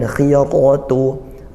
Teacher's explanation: Khiyaratu tetap tebal, ra-nya fathah. · ra-nya fathah dibaca tebal, jangan sampai setelah kasroh dibaca tipis ya